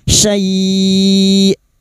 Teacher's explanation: Ini hamzah yang memiliki sifat jahar dan syiddah, tertahannya nafas dan suara.